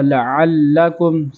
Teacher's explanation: یہاں پر لام پر بھی تشدید ہے تو لام کو بھی 2 مرتبہ پڑھا جائے گا، لعلکم سختی اور جماؤ کے ساتھ